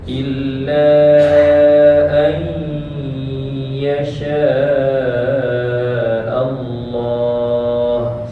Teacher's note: nun mati berjumpa ya tu kena dengungkan. Dengung masuk ke hidung.